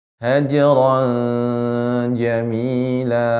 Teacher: wahzurhum hajron Jamila ya jadi hajar di sini ikhfa ya ikhfa dibaca dengan hukum ikhfa sehingga dibaca samar tanwinnya